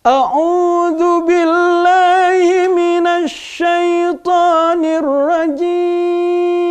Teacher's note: bagaimana lagu Nahawan itu yang pertama nadanya tinggi.